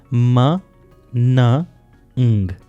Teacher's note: ये 3 साउंड्स हैं जो नेजल कैविटी से प्रोड्यूस होते हैं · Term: नेजल साउंड्स